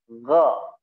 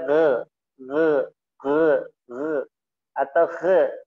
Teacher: ga atau dengan kha sama satu makhraj yang menaik, ya, suaranya tinggi, ga, tidak boleh ge atau khe, tidak boleh khe, dia ga suaranya menebal, ga istilah kha, ya, suaranya naik, ya. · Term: huruf tebal